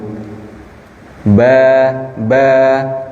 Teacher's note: Huruf ba terdapat di antara dua bibir, ya. Ba. Ya, pertemuan antara bibir atas dan bibir bawah dengan lembut.